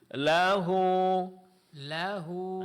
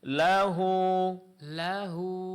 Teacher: Nah, ini mad sila qasirah. Panjangkan dua harakat.